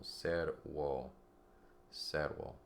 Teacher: two syllables, the accent always falls on the first syllable